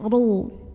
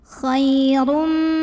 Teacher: Lalu ro-nya ini dibaca secara tafkhim karena ro-nya berbaris dhammah tanwin. Maka cara bacanya adalah dibaca dengan menebalkannya. Ru, pangkal lidah diangkat.